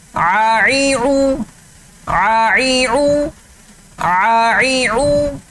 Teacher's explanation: عین کی آواز حلق کے درمیان سے نکالنی ہے